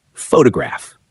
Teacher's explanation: Take the word photograph. The stress sits on the first part